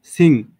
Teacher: The back of tongue, জিহ্বার পিছনের দিকটা এটা টাচ করে কোথায়? সফট প্যালেটে, মানে আমাদের নরম তালুতে। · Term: ভেলার সাউন্ড